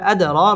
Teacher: দাল কলকলার হরফ ধাক্কা দিয়ে পড়তে হবে আদর র পুর হবে এবং খারা জবর এক আলিফ টান দিয়ে